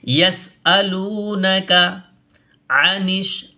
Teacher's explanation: عین نکالیے، ہے نا، الف نہیں پڑھنا، یعنی حمزہ کی آواز نہیں نکالنی، حمزہ زبر آ نہیں پڑھنا، عین زبر آ، ٹھیک ہے۔